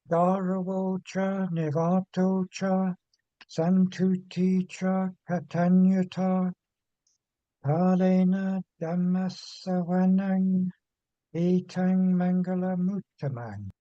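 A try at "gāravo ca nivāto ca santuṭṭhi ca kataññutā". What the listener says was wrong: Okay, very nice indeed. Excellent.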